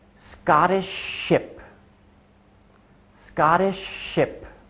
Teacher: once I've got my lips in that position to make the SH sound Shh I just keep them there I kind of maybe stop the air from going out so